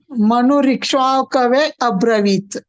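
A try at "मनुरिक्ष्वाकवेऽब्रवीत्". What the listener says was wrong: That Abravit you don't have to say separately. And then you should say Manurikshvakave Bravit.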